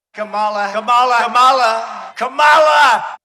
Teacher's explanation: Like with the emphasis on the last syllable, which is not how she pronounces it.